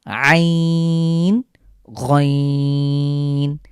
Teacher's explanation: কন্ঠের মাঝখান থেকে চাপ দিয়ে উচ্চারণ করতে হবে